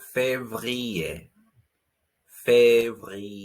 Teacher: the r sound comes from your throat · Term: french r